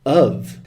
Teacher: Notice I don't say 'of' and, in fact, I almost never say 'of'. I say /əv/.